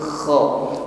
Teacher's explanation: Kha sifatnya isti'adah, bunyinya tebal, ya, pangkal lidah bagian belakang, ya, lidah bagian belakang terangkat, ya. Ini yang menyebabkan bunyi hurufnya menjadi tebal, kha, dan ada gesekan di tenggorokan, ada bunyi dengkur yang lembut, kha.